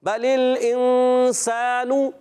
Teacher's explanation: نون پر پیش آ گئی ہے، حرکت ہے، نہیں کھینچیں گے، ہونٹ گول ہو جائیں گے